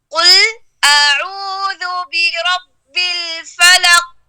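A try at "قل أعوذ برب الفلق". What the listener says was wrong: بربی با مشدد ہے، اس پہ زور لگائی. برب الفلق.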